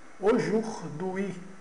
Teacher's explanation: O AU soa como o O fechado. O OU aqui, OU, soa como U.